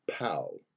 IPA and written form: pæl (Pal)